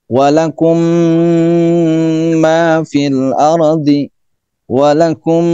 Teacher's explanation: Nah, idgham mimi yaitu mim mati bertemu dengan mim lagi. Jadi mimnya double. Nah, di sini diwajibkan atau diharuskan disertai dengan dengung. Walakum ma fil ardi walakum, nah nya itu ya, gunahnya itu, dengungnya itu, sehingga menghasilkan suaranya dari hidung yang disebut dengan al makhraj al khayshum.